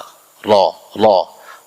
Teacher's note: satu kali getaran halus di ujung lidah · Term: takrir